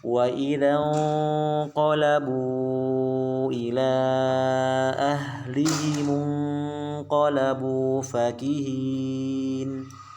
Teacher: ketika ada nun mati ketemu qaf ya, sudah kita bahas yang lalu, gunahnya ditafkhimkan, ditebalkan. Tidak kita baca wa idzan qalab, tapi wa idzan ya, karena ketemu huruf qaf ya. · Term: gunahnya ditebalkan